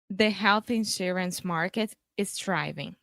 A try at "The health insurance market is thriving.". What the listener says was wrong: Nice.